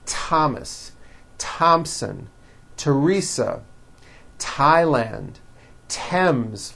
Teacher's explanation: Although these next words and names are spelled with a TH, they are pronounced as if they were spelled with a normal T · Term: TH exceptions